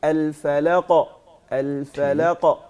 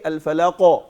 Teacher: قاف کا جو ہے اس کو موٹا پڑھنے کے لیے زبان کی جڑ کو اوپر اٹھانا ہے, جی, نہ کہ ہونٹوں کو گول کرنا.